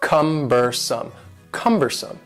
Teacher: The word cumbersome has three syllables and the stress is on the first syllable